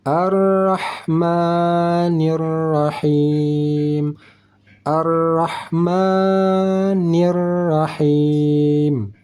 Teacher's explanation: Ha ini dibacanya di tengah kerongkongan